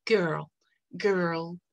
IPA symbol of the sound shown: ɜː